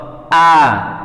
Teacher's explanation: jadi perut ini terasa seakan-akan pengen mengeluarkan huruf h inilah dinamakan tenggorokan bagian bawah